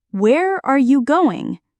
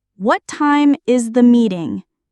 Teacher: WH questions with falling intonation. Your voice goes down at the end.